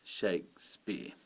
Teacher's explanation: you can hear that it's the first syllable that is emphasised